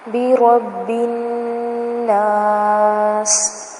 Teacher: با کو آگے الناس میں نون کے ساتھ ملائیں گے کیونکہ نون کے اوپر تشدید آ رہی ہے، اور ہم پڑھ چکے ہیں جب نون کے اوپر تشدید آتی ہے تو وہاں پر غنہ ہوتا ہے.